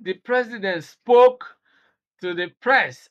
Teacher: Emphasis, stress is on spoke.